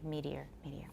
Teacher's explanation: meteor will be two syllables for some people but three for those who consider it the same as the stem in meteoric